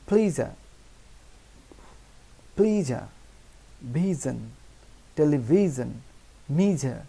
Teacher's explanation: জ এবং ঝ এর মাঝামাঝি উচ্চারণ জ ঝ, অর্থাৎ জ এবং ঝ দুটোরই সাউন্ড আসবে